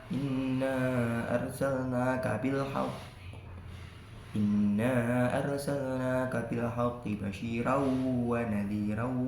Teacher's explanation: mat tobi'i bertemu dengan hamzah tapi di lain kalimat dibaca panjang kira-kira 3 ketukan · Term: mat jaiz munfasil